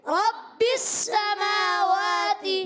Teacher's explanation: میم پر کھڑا زبر، واو پر کھڑا زبر، دونوں کو ایک ایک الف کھینچنا ہے، سین کی زبر نہیں کھینچنی، تا کی زیر نہیں کھینچنی، یاد رکھیں گے۔